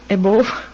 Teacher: Above is how it should be pronounced. I think she says above, more of a long O instead of a short U, schwa kind of sound in English